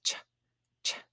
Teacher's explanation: it's a stop and it's aspirated so CH says ch ch you can hear that aspirated so it has some breath moving between it